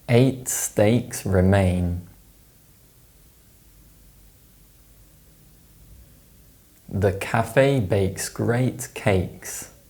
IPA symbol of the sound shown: eɪ